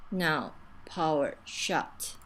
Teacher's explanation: I think you're doing a nice job with the lip rounding on now and power, but we lose that lip rounding on shout. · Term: ow diphthong